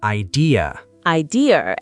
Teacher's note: In Britain, we say idea too, but sometimes it sounds like there's an R at the end because of the linking R in British accents